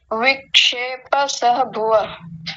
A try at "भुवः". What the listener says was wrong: भुवः, विसर्ग को पूरा बोलना चाहिए